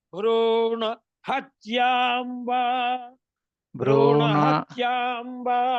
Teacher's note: భ్రూణ హ గట్టిగా అనుదాత్తం చెప్పండి.